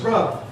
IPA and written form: rʌbd (rubbed)